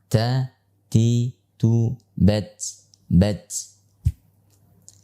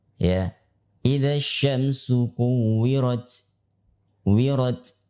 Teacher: ketika huruf ta itu diucapkan selalu disertai dengan hentakan nafas, terutama pada saat ia dalam keadaan sukun. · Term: sifat hamas